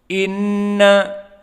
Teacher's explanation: gunnah makhrajnya dari khaysum, dari hidung